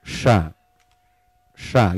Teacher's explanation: Makronnya pindah. Dari tengah lidah ke ujung lidah dibenturin suaranya ke gigi. Jadinya sya, berisik. Seharusnya lembut.